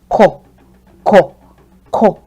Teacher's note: The essence of this is that my tone gets low when I say it. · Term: do tone